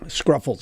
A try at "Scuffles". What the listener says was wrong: There's no R. It's Scuffles.